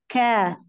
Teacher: huruf Kaf itu pangkal lidahnya bertemunya dengan langit-langit yang keras Jadi jangan terlalu ke belakang